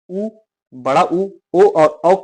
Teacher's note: इनको वृत्त मुखी स्वर कहते हैं। जब इनका उच्चारण करोगे तो आपके होठों में वृत्त जैसे आकार बनेगा।